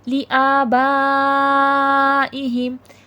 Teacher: آ پہ بھی کھڑا زبر ہے کھینچ کے پڑھا جائے گا، با پہ مد ہے بڑا مد ہے 5 سے 6 الف کی مقدار کے برابر پڑھا جائے گا